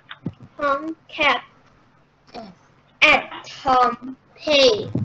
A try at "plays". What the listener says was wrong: Plays. Plays. Don't forget the S at the end.